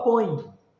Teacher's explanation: termina com E, mas você fala como se fosse I